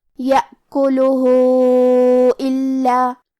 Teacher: یہ مد صلہ کبرا ہے، تو ہم اپنی آواز 2 سے 4 مد کے برابر لمبی کریں گے۔